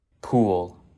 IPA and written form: pul (pool)